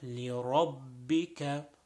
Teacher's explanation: making sure the ra is pronounced with a full mouth